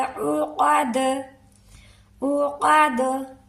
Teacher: दाल को हिलाते हुए जुंबिश से अदा करेंगे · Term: कलकला